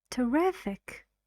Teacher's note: Three syllables. And the stress is on the second. Riff. Terrific.